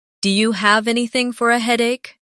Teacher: Do you sounds like dia.